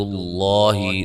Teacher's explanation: لفظ اللہ کے لام کو موٹا ادا کریں گے